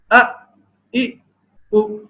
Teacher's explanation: یہ حروف اقصی حلق یعنی حلق کے نچلے حصے سے ادا ہوتے ہیں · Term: حروف حلقی